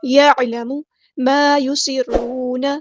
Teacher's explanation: سین کی سیٹی ہم نے واضح کرنی ہے